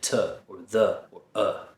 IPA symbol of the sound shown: ə